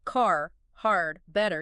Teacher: We say that R after a vowel, end of a word, middle, it's there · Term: the R sound